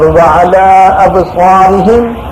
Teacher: مد پورا کر کے اور با میں قلقلہ کر کے